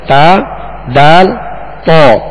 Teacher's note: زبان کی نوک اوپر کے دانتوں کی جڑ. زبان کی یہ نوک اوپر کے جو 2 دانت ہیں سامنے والے، ان کی جڑ اندر کی طرف جو اس کی جڑ ہے یہ اس سے ادا ہوتے ہیں، یعنی ان کا ایک ہی مخرج ہے، تا دال تو.